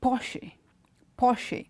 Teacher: this word the stress goes on to the first syllable